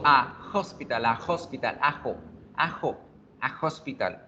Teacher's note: Pego la A con la consonante y ya, creo la fluidez.